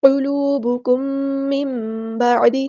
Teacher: قاف ہمارا heavy letter ہے، لام یہاں پہ باریک ہے، اور میم ساکن کے بعد میم آ گیا ہے، تو ہم یہاں پر ادغام شفوی کریں گے، ایک الف کے برابر رکیں گے۔ قلوبکم من بعد، نون ساکن کے بعد با ہے تو اغلاب ہوگا، تو میم کی آواز کو پڑھیں گے میم، ٹھیک ہے، اس طرح۔